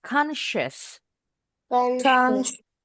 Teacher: Ini hati-hati bukan S juga, tapi SH. Bunyi S kayak ban kempes. Bunyi SH. Bibirnya rada monyong.